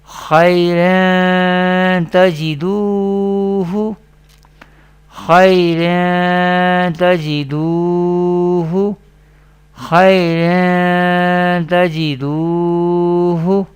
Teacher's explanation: This is mustaliya letter we pronounce with thicker voice or heavy voice in every condition.